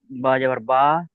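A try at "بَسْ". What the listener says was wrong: বা যাবার বা নয়, এটা দেখেন, এটা কি সিন অফে সু আছে? দেখেন, ভালো করে দেখেন। বা সিন যাবার বাস। এই যে আমি আপনাদেরকে লিখিয়ে দেখাচ্ছি, এই দেখেন, এটা হলো বা, এই হচ্ছে সিন, ঠিক আছে, এই হচ্ছে সিন। তাহলে এটা বা, এটা সিন। এই বার উপরে কি আছে? জাবার আছে।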